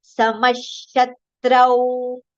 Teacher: Now the visarga sound is partial sh because following letter is sh.